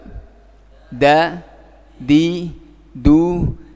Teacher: perhatikan ujung lidah dengan pangkal gigi seri yang atas ya dengan pangkal jangan naik lagi kalau naik lagi sampai ke langit-langit jadi dae-woong Nda enak Coba